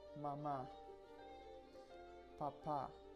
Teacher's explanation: almost all the accent go into the first syllable